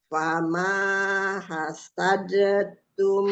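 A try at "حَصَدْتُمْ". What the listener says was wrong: hasad. Enggak langsung diidghamkan ke ta. Fama hasadtum.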